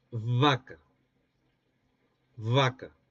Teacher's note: Es decir, no produciendo el oclusivo, sino el fricativo.